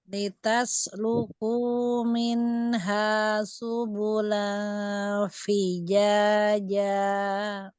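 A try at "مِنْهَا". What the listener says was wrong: Nanti latihan mi. bukan min, dan bukan min, bukan min tapi mi, minha, minha. Nah, ini minha. Bukan ha, tapi ha. Ha, ha. Buka rahangnya. Ha. Jangan ada hamzah. Jangan tambahan hamzah. Ha. Minha. Minha. Kasranya.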